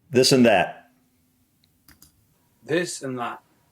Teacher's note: So when a T appears at the end of a word in West Country, they generally omit it.